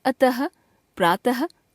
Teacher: विसर्ग इस ध्वनि का उच्चारण ह के समान होता है।